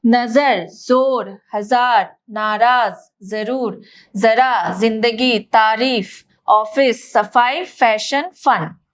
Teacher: इनका उच्चारण करते समय हवा घर्षण के साथ निकलती है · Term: संघर्षी ध्वनि